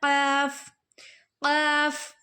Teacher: قاف زبان کی جڑ کی ابتدا اس کے مقابل اوپر کے تالو سے ادا ہوتا ہے۔ زبان کی جڑ کی ابتدا مطلب کہ جہاں سے ہماری زبان شروع ہو رہی ہے، جہاں زبان کی جڑ ہے وہ اوپر کے تالو سے ملے گا تو کیا ادا ہوگا، قاف ادا ہوگا، ٹھیک ہے۔